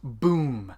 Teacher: I'm keeping my lips really tight together and trying to make that sound that pops out of it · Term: kick drum